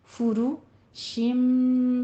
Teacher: متکئین علی فرش، فا کے اوپر ضمہ ہے، دونوں ہونٹ گول کیجئے۔ را کے اوپر را مضمومہ ہے، مفخم ہے، ہونٹ گول کیجئے · طائنها میں مد متصل واجب 5 کاؤنٹ کرنا ہے